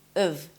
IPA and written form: əv (of)